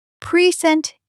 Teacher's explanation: When you stress the second syllable, present, it's a verb.